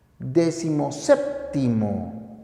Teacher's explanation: Pero al yuxtaponer, el primero pierde el acento y este recae solo en el segundo.